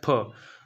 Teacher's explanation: दोनों होठ आपस में स्पर्श होकर अलग होते हैं, फिर बोला जाता है फ